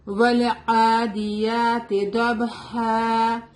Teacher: ڈاڈ از heavy letter. ڈاڈ اس کو دال کی طرح نہیں پڑھیں گے